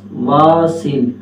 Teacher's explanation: اوپر والے جو ہمارے دانت ہیں وہ نیچے والے ہونٹوں کے ساتھ مل جاتے ہیں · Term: واو